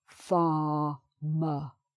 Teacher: So, there are two R's in farmer and both of them are silent.